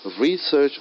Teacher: i'm stressing more on the word re first syllable